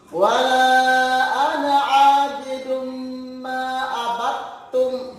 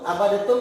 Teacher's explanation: Kemudian perhatikan ma'abattum, bukan abadatum, tetapi ketika ketemu dengan huruf ta, ini dia melebur sehingga huruf dalnya tadi menjadi hilang